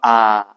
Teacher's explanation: मुख द्वार पूरा खुलता है